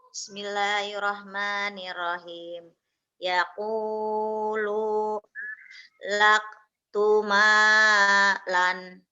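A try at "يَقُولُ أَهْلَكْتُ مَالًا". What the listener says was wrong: Yaqulu ahnya ketinggalan tuh. Yaqulu ahlak tumalan.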